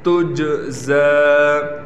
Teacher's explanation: جیم حروف قلقلہ میں سے ہے، لہٰذا یہاں ایک قلقلہ کیا جائے گا، جیم پر آواز کو ہلایا جائے گا